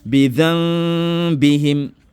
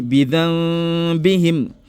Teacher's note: Parce qu'on t'a déjà dit que lorsque la lettre Ba'un vient juste après le nun sakina, automatiquement tu es en face de la règle de Iqlab. Donc le Iqlab engendre le nazima.